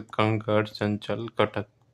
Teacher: तो ये याद रखना नाक से अधिक हवा निकलती है इनमें और मुख से कम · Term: अनुस्वार